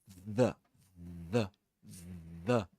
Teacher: But when you say the, the, as in the or there is vibration in the vocal folds.